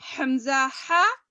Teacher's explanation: جی ہاں، عین ہا درمیانی حلق سے ادا ہوتا، اور اقصائے حلق آخری حلق جو سینے سے قریب ہے، سینے کی طرف ہے، نیچے والا، وہاں سے حمزہ ہا